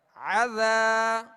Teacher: ذال کو نرمی کے ساتھ ادا کرنا ہے اور ایک الف کی مقدار کھینچیں گے، یہاں الف مدہ ہے